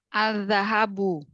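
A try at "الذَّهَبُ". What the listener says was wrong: Al-zahabu atau az-zahabu. Berarti kalau al-nya terbaca Komariah. Ya, ternyata syamsiyah. Jadi kalau huruf ya, huruf setelah alif lam, ini kita fokus pada huruf setelah alif lam.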